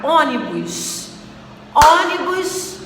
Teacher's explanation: O on, que é a sílaba tônica, é a antepenúltima sílaba. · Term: proparoxítona